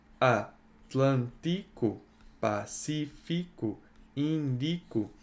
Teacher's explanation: A sílaba tônica é sempre a antipenúltima, tá? Isso caracteriza como a proparoxítona.